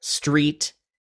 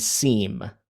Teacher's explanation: you have the T on one and then the M on the other. So one is from the vocalized family, the other is from the nasal family